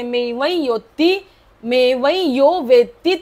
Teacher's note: व च्या वरचा जो अनुस्वार आहे त्याला मेव योती नाकामध्ये बोलायचे